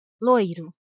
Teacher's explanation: Aqui, a letra O é a vogal e a letra I a semivogal. Ou seja, a letra O é pronunciada com mais força que a letra I